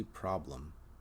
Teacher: I use the American R sound, which occurs mid-mouth, the long ah sound, and the sound, represented by the schwa, the upside-down E.